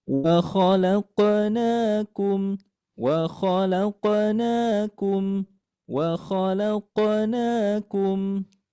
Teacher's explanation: Na dan na ini dibaca panjang dua harakat. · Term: mad asli